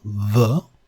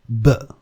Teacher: The ube would be labiodental, v, and the b would be bilabial, b.